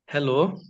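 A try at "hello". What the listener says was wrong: হ্যালো হবে না, লেও। হ্যালো। আপনি যেটা বলছেন এটা হচ্ছে বাংলা উচ্চারণ, ঠিক আছে? সাউন্ডটা অনেকটা LEWর হবে। হ্যালো, লেও, লেও, হ্যালো।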